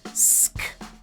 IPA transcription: sk